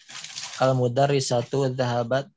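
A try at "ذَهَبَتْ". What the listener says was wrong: Ya, ini jahabat ya, harusnya sukun jahabat.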